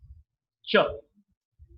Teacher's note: Ch is a voiceless sound because for the same old reason that the vocal cords are held apart from each other and the air passes through. There is a wide gap and the air passes through. · If the alveolar itself is very small area, So from the back of the alveolar, this sound is produced. When the tip of the tongue touches the back of the alveolar, we get the post-alveolar sound. So the state of the glottis is voiceless.